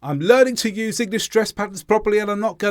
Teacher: in the constant stress pattern every single word was pronounced with the same amount of stress that means all the sounds had the same emphasis I didn't